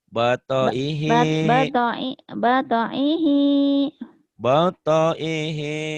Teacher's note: pendek semua, ujungnya doang yang panjang